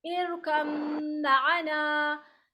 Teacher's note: फिर बा का मीम में इरकम माना, इसमें बा नहीं पढ़ेंगे, मीम डायरेक्ट पढ़ेंगे और मीम में इदगाम करेंगे, मीम का गुन्ना करेंगे